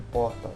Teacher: porta nós temos aí a as as consoantes separadas no entanto ele é um encontro de consoantes porque a gente pronuncia o r e pronuncia o t